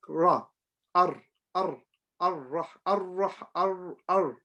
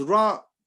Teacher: But we have to make sure when we say Ra, we don't do 2 things. We don't roll our tongue, and we don't vibrate the sound.